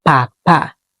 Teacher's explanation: we pronounce it a a like cat, but it's a shorter vowel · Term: short a